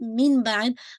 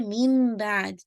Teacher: اقلاب کے لیے کنڈیشن ہی صرف ایک ہوتی ہے کہ نون ساکن یا تنوین کے بعد لیٹر با آ جائے، جب لیٹر با آ جاتا ہے تو نون ساکن اور تنوین کی آواز میم میں مرج ہو جاتی ہے، ناٹ مین بعد، آپ پڑھتی ہیں میم بعد، ٹھیک ہے؟